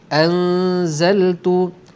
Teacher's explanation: didengungkan 2 harakat dengan bunyi dengung, bunyi bercampur antara bunyi nun mati dengan huruf selepasnya zai. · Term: ikhfa hakiki